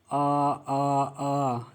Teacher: य आवाज कंठ से निकल रही है इसीलिए इसको कहाया कंठ